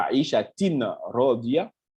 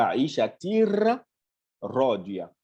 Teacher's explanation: le ro se dédouble, le nun qui a dans le tanwin là disparaît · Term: l'idgham total